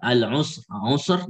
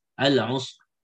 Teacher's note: tengahnya ini sukun dan sebelumnya dhamma, maka di sini tebal juga al-usr ya.